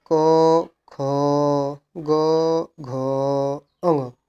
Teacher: क वर्ग यानी कि ये कंठ में आते हैं